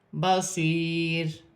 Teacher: وقف کی صورت میں دو پیش کی تنوین گر جائے گی اور را ساکن ہو جائے گی